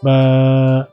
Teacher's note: বায়ের মাখরাজ হচ্ছে দুই ঠোঁটের ভেজা অংশ থেকে উচ্চারিত।